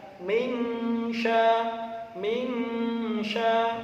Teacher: minya harus dibaca ikhfa samar membacanya · Cuma ada ilmu tajwid harus dibaca min sya, min sya. Harus dibaca ikhfa, samar.